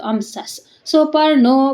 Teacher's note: ವಿಸರ್ಗ ಇದೆ ಸ ಅದಕ್ಕೆ ಮುಂದೆ ಸು ಇರೋದ್ರಿಂದ ಅರ್ಧ ಸ ಆಯ್ತು